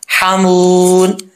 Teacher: واو مدہ ہے، ایک الف کی مقدار یہاں پہ لمبا کریں گے